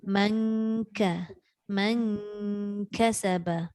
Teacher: Bunyinya nipis, tapi pastikan nipis itu mesti bertemu hampir dengan huruf kaf. Hampir dengan makhraj huruf kaf.